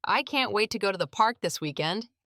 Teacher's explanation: Notice how the stress is on can't wait. That's natural English emphasis.